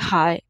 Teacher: لا، یہ جو آنکھوں والی ہا ہے یہ حلق کے سب سے آخر والے، یہ بھی ہلکی حرف ہے، اور یہ حلق کے سب سے آخر والے حصے جو سینے کی طرف حلق کا حصہ ہے وہاں سے ادا ہوگی۔ جب ہمیں کوئی مسئلہ ہو، کوئی تکلیف ہو تو ہمارے منہ سے نکلتا ہے ہائے، تو وہ جو ہائے نکلتی ہے آپ دیکھیں کہ اس کی وائبریشن کہاں ہو رہی ہے، وہ سینے کی طرف ہو رہی ہوتی ہے، تو وہاں سے یہ ہا جو ہے وہ ادا ہوگی۔